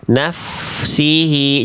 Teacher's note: bunyi fa dan sinnya jangan sampai nyampur fa dulu beres naf baru si